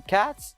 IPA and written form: kæts (cats)